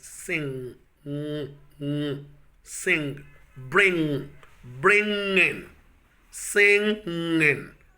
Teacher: there is no plosion in the production of the sound that comes after the nasal, the velar nasal sound